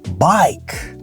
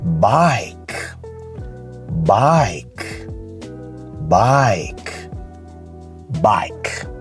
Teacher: The I sound is stretched out a bit. It becomes I instead of I. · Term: long vowel sound